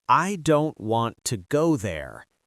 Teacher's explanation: Now, the important words in this sentence that are stressed are said strongly are don't and go. The smaller words like I, to, there are said more softly or quickly.